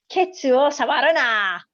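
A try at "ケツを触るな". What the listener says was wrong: Very good. Good.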